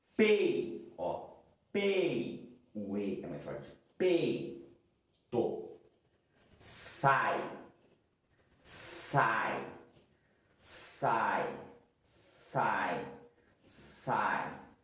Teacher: Um som caindo. Então nós temos uma vogal que é pronunciada mais forte e uma semivogal depois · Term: Decrescente